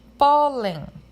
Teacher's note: Ela é terminada em N e a sílaba mais forte dela ali é o pó, que é acentuada.